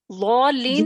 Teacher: شروع سے لے کے آخر تک آپ نے آواز کو موٹا رکھنا ہے، جب تک آپ پوری مد ادا کر لیں گے. مد لازم آ جاتی ہے یہاں پہ.